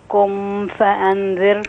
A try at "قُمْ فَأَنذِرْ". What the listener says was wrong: قم فا الميم تبقى واضحة ما فيش فيها غنة. قم فا.